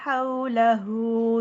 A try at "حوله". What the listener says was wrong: ہاؤ، ہاں جی، ہاؤ نہیں ہوتا ہے لین. ہاؤ پورے گول ہونٹوں میں. لین کا مخرج بھی تو وہی ہے نا، شفتان واؤ کے مخرج کے ساتھ. تو گول ہونٹ پورے پراپر ہونے چاہیے. ہاؤ، حولہ.